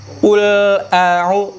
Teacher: dengan pangkal lidah yang paling belakang ketemu dengan rahang yang lembek